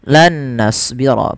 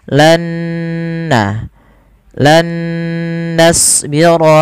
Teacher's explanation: Di sini diwarnai dengan nun yang kedua warna hijau, yang artinya idgham itu memasukkan nun yang pertama kepada nun yang kedua disertai dengan gunnah. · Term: idgham bi gunnah